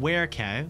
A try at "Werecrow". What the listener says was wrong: Were Crow. Werecow. There's an R in there.